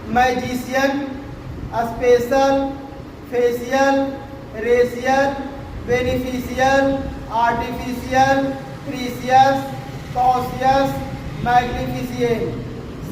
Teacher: spelling rule का next rule क्या है कि अगर कोई spelling CIAL, CIAL, CIOUS, CIENT से अंत होता है तो वहाँ सी का उच्चारण मूर्धन्य सा होता है